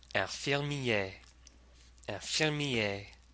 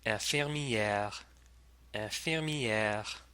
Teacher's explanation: The masculine form ends with an A sound. In the feminine form, though, that vowel turns into an E. So, two different vowel sounds, A and E.